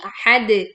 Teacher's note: Pantulan dal sukun karena waqaf dengan bunyi pantulan yang kuat.